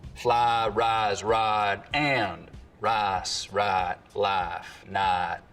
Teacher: In most of the Piney Woods Belt, though, there's always been what we can describe as full price smoothing, where some Southerners smooth the diphthong in words like fly, rise, and ride, but use a diphthong in rice and right.